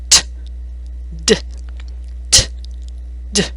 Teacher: The tongue taps the back of the upper teeth.